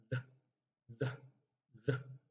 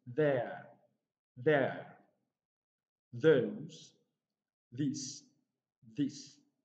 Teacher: So So it's voice because when you pronounce the sound, there's a vibration. It's dental because the tongue is locked between the upper teeth and the lower teeth, and it is fricative because of the frictional noise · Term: voiced dental fricative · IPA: ð